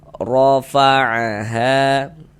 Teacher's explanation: Nah, ini baris di atas nih harokat fathah atau tanda baca fathah. Maka ini huruf ra kita baca tafkhim, kita baca tebal. Sehingga pangkal lidah kita naik terangkat ke atas ketika kita mengucapkannya